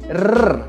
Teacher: quando a letra R está antes de uma vogal, ela tem esse som com a língua vibrando no céu da boca.